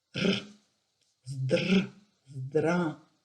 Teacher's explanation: pour R russe, vous mettez le bout de votre langue vers les dents supérieures, vous fermez les dents, vous faites vibrer le bout de la langue tout en expirant.